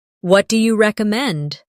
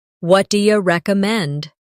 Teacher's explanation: Notice how do you becomes dia in casual conversation.